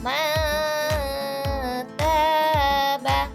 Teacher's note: mati setelah nun mati bertemu dengan huruf Ta Maka cara membaca nun mati ialah dengan samar setelah samar baru didengungkan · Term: ikhfa